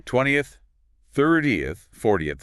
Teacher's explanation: The stress is still on that first part, like the cardinal number.